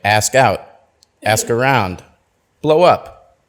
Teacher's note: for the phrasal verbs you want to stress the preposition